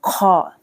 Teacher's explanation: خا کو پڑھنا ہے حلق کے سب سے اوپر والے سے